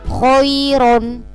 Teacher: ro-nya dibaca tebal. Ini karena berharokat fathatain. Khairon. Ya, jadi dibaca tebal ro-nya. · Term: tafkhim